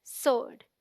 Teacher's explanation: The wrong pronunciation is sword because people pronounce the w sound which is not there, जो वहां है ही नहीं, because the W is silent, so it sounds like sword, as in Lord.